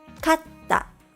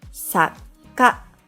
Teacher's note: middle non-sound is counted as one mora. To transcribe them in Romaji, we generally add an extra letter, the same consonant that follows the non-sound mora. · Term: double consonants